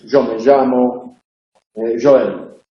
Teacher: Que hay otras realizaciones centrales y eso es lo que se llama rehilamiento. En algunas zonas se produce una vibración adicional en la central que hace que suene como una je, como una che sonora